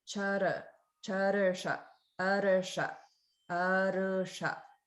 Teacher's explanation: So when this is conjunct with a sound like a sibilant, a sha sound, or also ha, there's a slight gap or a slight rolling of the R. So they're separated slightly. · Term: swara bhakti